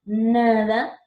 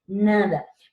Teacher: dense cuenta que la lengua choca con el alveolo, con la parte trasera de los dientes